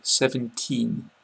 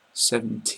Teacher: 17 has the n on the end but also you want to make the e a lot longer